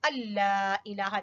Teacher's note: نون جو ہے وہ لام میں داخل ہو گیا اس لیے لام کے اوپر شاد ہے.